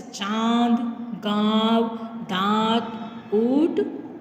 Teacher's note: अनुनासिक जिसका प्रयोग हम मुख और नाक के द्वारा जब बोलते हैं, उच्चारण करते हैं तो मुख और नाक से करते हैं, इसको चंद्र बिंदु भी कहा जाता है।